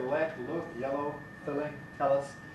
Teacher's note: In American English it's a bit darker.